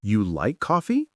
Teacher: Yes, your voice went up at the end. That tells me it's a question even without using special question words. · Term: intonation